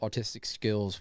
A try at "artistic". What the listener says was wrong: It sounded like you said autistic. R.